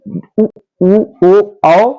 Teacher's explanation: जिन स्वरों के उच्चारण में मुंह गोल हो जाए ठीक है उसे वर्तुलाचा स्वर कहते हैं वृत्ताकार हो जाए उसे